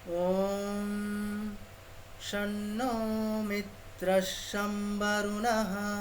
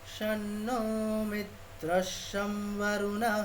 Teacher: অনুস্বারটাকে কি বলবো, অনুস্বারটাকে দন্তীয় ন বলবো, দন্ত ঠিক ন।